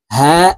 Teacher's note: এটি ছোট হা হলুকের শুরু থেকেই উচ্চারণ করবো